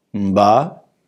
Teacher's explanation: In the word mba, rice, we have a rising tone, LH tone